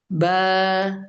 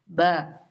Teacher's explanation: 2 ചുണ്ടും കൂട്ടി മുട്ടിയിട്ട് വേണം ഓപ്പൺ ആവാൻ.